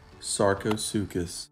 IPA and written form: ˌsɑːrkoʊˈsuːkəs (Sarcosuchus)